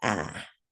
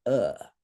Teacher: in Sanskrit there is no ah there's only uh